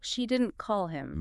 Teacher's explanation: Flat denial. And stress on call. She didn't call him. Meaning she communicated with him, but she didn't call him.